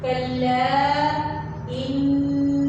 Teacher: نون مشدد ہے تو اس کو ہم نے غنہ کے ساتھ پڑھنا ہے۔